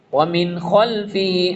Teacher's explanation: اظہار کریں گے، کلیئر ریڈ کریں گے نون کے ساؤنڈ کو